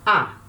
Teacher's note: Quando essa vogal alfa for longa e logo depois vier um iota, esse iota ele passa a ser grafado, escrito embaixo da vogal alfa. E quando a gente for ler, a gente não lê mais como ai, como um ditongo ai. A gente lê como a, como uma letra só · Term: iota subscrito